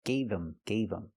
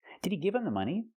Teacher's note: Not him, but gave him, gave him. The H in him is silent because the word's not stressed.